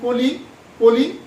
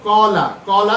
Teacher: কলির যে ক সেটি হচ্ছে সংবৃত আর কলার যে ক সেটি হচ্ছে বিবৃত